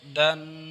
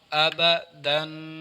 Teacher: اب دیکھیں تنوین کی آواز ناک میں ہے